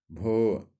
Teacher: महाप्राण घोष व्यंजन वर्ण का उदाहरण है